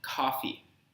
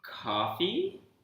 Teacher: that is take for example this sentence you want coffee and if you say coffee with this flat tone coffee in English it communicates a statement but if you communicate it with this rising tone coffee like you want coffee you communicate a question